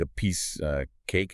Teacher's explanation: Wow, okay, and the preposition of O-N. The O turns into a schwa, and sometimes the F barely survives. It becomes uvai, or just a grunt, like a piece cake.